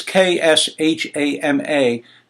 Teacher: It's Kshama. There's no vowel between the K and the S.